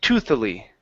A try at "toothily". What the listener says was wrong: Okay, pronounce the TH there. Toothily. Okay, the TH is in the middle.